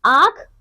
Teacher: अनुनासिक इसका उच्चारण नाक और गले दोनों से होता है